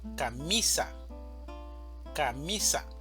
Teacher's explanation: Camisa tiene tres sílabas, una sílaba tónica y dos sílabas átonas. La mayor fuerza de voz la tenemos en mi, camisa, camisa.